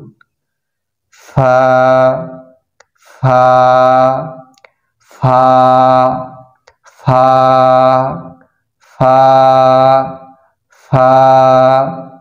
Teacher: ফা হরফের মাখরাজ হচ্ছে নিচের ঠোঁটের পেট সামনের উপরের দুই দাঁতের আগা হইতে